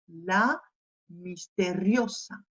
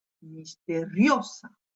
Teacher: La misteriosa. J'ai appuyé sur cette syllabe, hein, et plus précisément sur le O